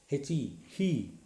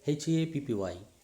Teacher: so the mouth is open, the sound is coming from the extreme back part of the mouth. Okay, that is from glottis, so that's why it is a glottal sound. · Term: glottal fricative